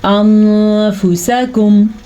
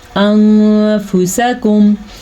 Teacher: نون کی آواز کسی حد تک چھپانی بھی ہے اور غنہ بھی کرنا ہے